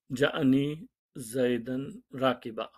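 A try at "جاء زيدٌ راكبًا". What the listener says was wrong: زیدن نہیں ہوگا، کل بھی وہی غلطی کر رہے تھے.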